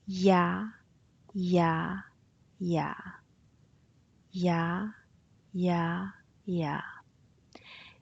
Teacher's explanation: you start with a semi vowel and then you glide onto a vowel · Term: on glide